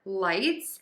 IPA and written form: laɪts (lights)